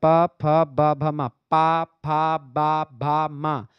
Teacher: पा बोलेंगे तो आपका दोनों ओठ जो है वह आपस में चिपक जाता है आप बिना ओठ को चिपकाए बोलिए पा फ बा आप बोल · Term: ओष्ठ व्यंजन